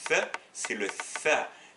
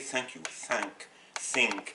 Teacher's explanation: c'est une interdentale, c'est-à-dire bout de langue entre les dents